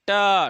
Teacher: मसूड़े में जीभ लगेगी जाकर के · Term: मूर्धन्य